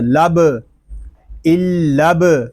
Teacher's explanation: با ساکن ہے، اس میں خوب کلکلا ظاہر کریں گے